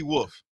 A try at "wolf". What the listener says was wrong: Wolf. Not wolf. You gotta try to pronounce the L.